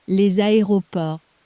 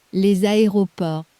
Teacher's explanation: A little Z appeared out of nowhere, hooking the two words together. That's the liaison.